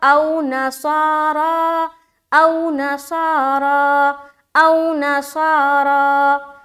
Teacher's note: واو لین کو ہم نرم آواز کے ساتھ جلد پڑھتے ہیں اور معروف پڑھتے ہیں، تو یہاں پر ہمیں خیال رکھنا ہے کہ آپ کی آواز لمبی نہ ہونے پائے اور نہ ہی سخت ہو، تو کیا پڑھیں گے یہاں پر؟